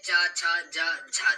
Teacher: तालव्य व्यंजन है, तालु से बोले जाने वाले व्यंजन है।